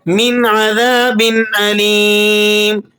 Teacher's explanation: نون ساکنہ پر آپ یہاں غنہ ادا نہیں کریں گے آگے حروف حلقی کی وجہ سے۔ اسی طرح با کی تنوین پر بھی آپ نے غنہ ادا نہیں کرنا، آگے حروف حلقی آ گیا۔